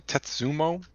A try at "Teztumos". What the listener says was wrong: It's with a Z.